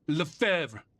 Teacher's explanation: Roughly like Lefebvre with a silent B and a soft guttural R at the end